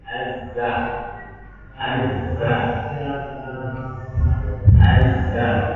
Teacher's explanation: Huruf zai itu ujung lidah nyentuh ke gigi seri bawah.